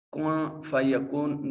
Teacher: نون ساکن کے بعد فا حرف اخفا ہے، تو نون کو اپنے مخرج میں چھپا کر پڑھیں گے